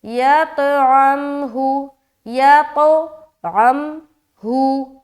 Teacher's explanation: یہاں پر عین کو میم سے جب ملائیں گے تو قلقلہ نہیں کریں گے